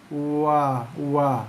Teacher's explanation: keluar daripada dua bibir tapi tak ada sentuhan antara dua bibir. Keluarnya huruf wa.